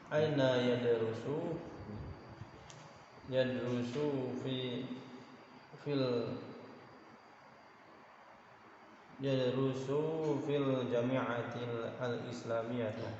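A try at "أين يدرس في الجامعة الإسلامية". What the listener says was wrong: Jami'atil al-islamiyah. Jangan digabung. Alif lamnya jangan didobel.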